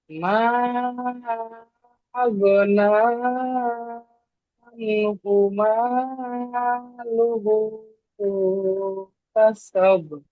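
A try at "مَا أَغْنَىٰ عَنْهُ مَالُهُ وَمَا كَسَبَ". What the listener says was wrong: লুহু ওয়ামা, এটা আমি একটু শুনতে পাইনি, ওয়ামা কাসাব, ঠিক আছে?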